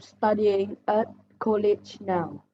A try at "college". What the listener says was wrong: College, not Coolidge. College.